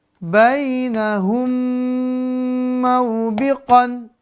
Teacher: apabila ada mim sukun bertemu mim hidup, maka dibaca dengung 2-3 harokat · mim sukun, mim mati, bertemu dia, masuk ke mim yang kedua, disertai dengan dengung durasinya 2-3 harokat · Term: idgham mimi